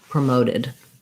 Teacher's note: you're going to have kind of this T becoming a flap